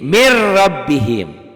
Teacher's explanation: Min rabbihim, bunyi N-nya berubah jadi R. Kenapa? Karena hukum nun mati ketemu ro idgham bila gunnah.